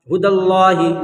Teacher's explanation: لفظ اللہ کے لام سے پہلے زبر، اس لیے لفظ اللہ کے لام کو پر پڑھیں گے